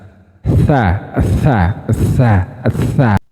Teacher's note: makhrajnya sama kayak zal, ujung lidah dengan ujung gigi seri atas